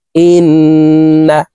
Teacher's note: তাসদ নুনের সাথে তিন সেকেন্ড পরিমাণ গুন্নাহ করে ধরে রেখে পড়ব